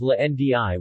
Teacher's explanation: The retroflex approximant 'r' [ɻ] is not permitted word-initially and instead becomes a lateral 'l'.